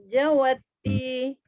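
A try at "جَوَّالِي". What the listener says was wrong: Jawali lam ujung ni.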